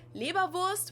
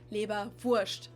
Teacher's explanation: You can either say Leberwurst, which would be the more standard pronunciation, or in Bavaria, we usually tend to say Leberwurst. So like, we just make it an sh sound instead of the s, Leberwurst.